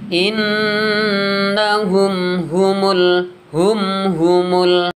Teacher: Jadi harus dibaca idhar syafawi karena ada mim sukun bertemu dengan huruf ha, ya, ha besar. Jadi harus jelas.